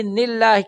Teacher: د الله لام باریک شو